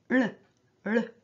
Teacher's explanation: Så skal jeg si noen ord om tjukk L. Tjukk L, det er en retrofleks lyd med tungeslag, altså en såkalt flapp, der man sier sånn l, l.